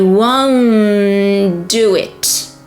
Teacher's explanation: And because you have a T in won't and a D in do it, first consonant, the T, is dropped. So you do not want to break the chain of sounds, so you drop the first consonant when you have two consonants, one next to each other.